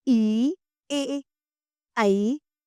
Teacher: अग्र स्वर है, इन स्वरों के उच्चारण में जीभ का अगला भाग थोड़ा सा उठता है